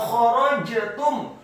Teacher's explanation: kha-nya dibaca tafkhim, tebal dan serak